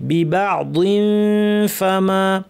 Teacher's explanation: দাঁত ঠোঁটের উপরে এনে ফা বলার জন্য মুখ রেডি করে নাক থেকে গুণনা করতে হবে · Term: ইখফা